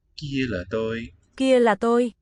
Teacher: Kia may be just a little lower, but also seemingly a level tone.